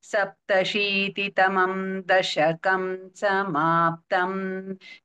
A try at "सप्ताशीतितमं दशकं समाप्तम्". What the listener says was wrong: उत्तम सप्ताशीतितमं दीर्घ is there सप्ताशीतितमं दशकं समाप्तम्